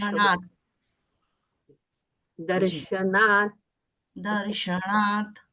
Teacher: यहाँ पर न है, त थ द ध न, मतलब दंत्य उच्चारण है। दांत को स्पर्श दर्शनात्।